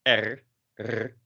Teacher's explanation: in the back of your throat with using your uvula